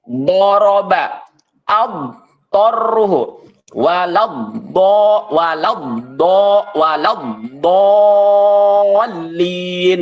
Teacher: makhraj do itu dia berada di hafatul lisan ataupun pinggir lidah pinggir lidah bagian belakang nah tapi karena dia memiliki sifat istialah jadi ketika kita lafalkan